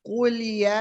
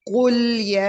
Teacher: कु या के लिए होठ बिल्कुल गोल कर दे क्योंकि पेश है